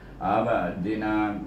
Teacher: Selepas itu kita jumpa huruf ain baris di atas a, dimatikan dengan huruf ba, iaitu ba adalah huruf kakalah, maka dia berada di tengah kalimah, kalimah abdina, maka kita baca ab itu dengan kalkalah sugra, iaitu kita wakaf dengan dia dengan bab kalkalah sugra ab, gitu kan, ab dina, tapi tidaklah sekuat kubra.